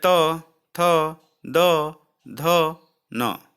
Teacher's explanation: दंत व्यंजन है यानी दांत की सहायता से बोले जाने वाले व्यंजन